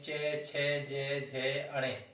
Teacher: च वर्ग जो होते हैं ये तालु से बोले जाने वाले वर्ण होते हैं